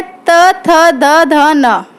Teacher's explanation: जो हमारी जीभ होती है वो दंत पर टच होती है